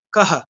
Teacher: কাহা বলে আমি কটাকে যতটা সময় ধরে উচ্চারণ করছি, হটাকে সেরকম করে করছি না, কাহা এরকম করছি না, কাহা। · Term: হয়ের আংশিক উচ্চারণ